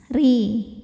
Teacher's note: [bernyanyi] Huruf ra dibunyikan secara tarqiq sebab ra berbaris di bawah yaitu baris kasrah. Maka dibacanya tipis. Ri tanpa harus mengangkat pangkal lidah.